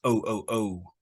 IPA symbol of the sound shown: əʊ